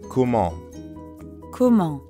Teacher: Comment ends in the nasal sound, en.